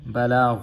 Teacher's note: غین جو ہے پور پڑھا جائے گا، اور علینا بھی 2 الف مد۔